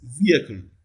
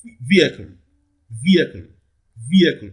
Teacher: clearly the first syllable here receives the primary stress